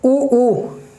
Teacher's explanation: ऊ इसमें हमारे मुंह, हमारे यानी होठ काम करते हैं, ऊ, इनमें होठों से काम होता है। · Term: ओष्ठ